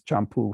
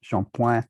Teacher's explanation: French would regularly turn a Spanish ch into a sh. So in French, it comes out as shampoing, and that's the basis for our shampoo.